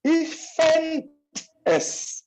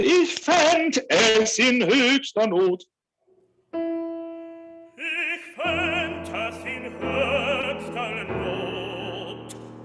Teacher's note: So you're gonna have a T instead of the D, and then you're gonna have then that'll set up the nice separation you need to make sure we hear that.